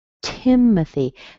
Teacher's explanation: Strong in the beginning. The O doesn't have its own sound. It is a schwa. Tim. And then at the very end, you see the Y, so we have a little E sound.